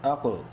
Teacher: منہ بھر کے پڑھیں گے قاف کو اور قلقلہ بھی کریں گے